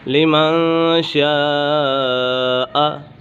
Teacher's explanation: لمن شاء، یہاں پر مد متصل ہے، حروف مدہ کے بعد حمزہ اسی کلمے میں ہے تو اسی وجہ سے مد متصل ہوگا